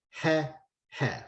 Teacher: the e, segol, and the a, tsere, are both pronounced the same. It's both e in Israel.